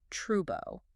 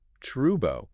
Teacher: The L is completely gone, replaced by the vowel your mouth naturally forms when the tongue drops. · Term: dark L